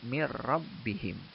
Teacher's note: nunnya dileburkan ke suara ro. Jadi membacanya mir rabbihim. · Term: idgham bila guna